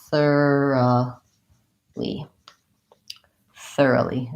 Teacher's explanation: thoroughly has a schwa instead of a clear O sound · when I have the word thoroughly, I no longer say this clear vowel O. It changes to a schwa that sounds more like So I have instead of thoroughly, I have thoroughly.